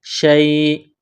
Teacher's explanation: شیئن جب وقف کریں گے تو حمزہ کو سائلنٹ کریں گے